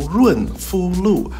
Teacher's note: And the fu is a first tone. Not low, but kind of medium high.